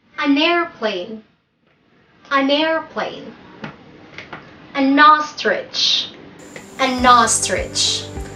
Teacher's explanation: to pronounce them together with the article and at the beginning we are not pronouncing them as two different words but they should sound like a single word